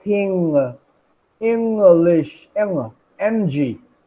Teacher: that ng sound. We use the nasal cavity.